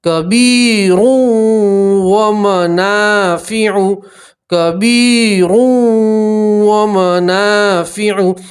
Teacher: یہاں تنوین کا ادغام ہے، تنوین کو واو کے اندر ملائیں گے اور ایک الف کے برابر گننا کریں گے۔